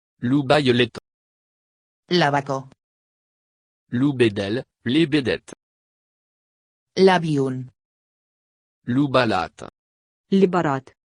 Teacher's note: en général le V se prononce B en ocitant